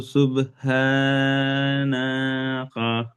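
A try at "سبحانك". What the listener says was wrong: না টান হলো কেন না টান দিলেন কেন সুবহানা বললেন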